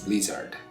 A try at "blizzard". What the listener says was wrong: You got a little bit of a Korean E sound going on. Say bleh. No, bleh. Blizzard. You just gotta talk low. But don't separate it too much. Don't say blizzard. Blizzard.